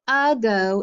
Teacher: since the a is not followed by a consonant and is not accented it makes the schwa sound